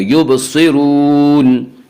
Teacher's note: حروف مستعلیہ ہمیشہ ہر حال میں پر پڑھے جاتے ہیں، لہٰذا یہاں پہ صاد کو پر پڑھیں گے